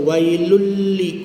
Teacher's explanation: Wailul lam tu idgham bila ghunnah. Tanwin berjumpa dengan lam. Masukkan pada lam baris dua.